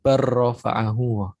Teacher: Bal lamnya hampir melebur ke ro. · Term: dileburkan